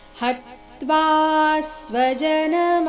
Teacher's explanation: ಹತ್ವಾ ಹ ಮೇಲೆ ಆಘಾತ, ಮುಂದೆ ತ್ವಾ ಎಂಬ ಸಂಯುಕ್ತಾಕ್ಷರ ಇದ್ದ ಕಾರಣ ತ್ವಾ ದೀರ್ಘ ಬಂದು ಅದರ ಮೇಲೆ ಸೌಮ್ಯ ಆಘಾತ ಬರಬೇಕು, ಮುಂದೆ ಸ್ವಜನದಲ್ಲಿನ ಸ್ವ ಸಂಯುಕ್ತಾಕ್ಷರ ಇದ್ದ ಕಾರಣ.